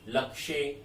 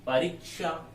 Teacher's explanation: कहीं क नहीं है, फिर भी क की आवाज आ रही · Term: क की ध्वनि